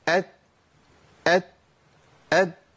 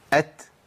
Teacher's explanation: ما ينفعش تطلع تاء بدون همس